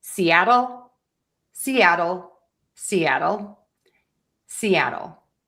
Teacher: I'm using a D here because this is a flap T.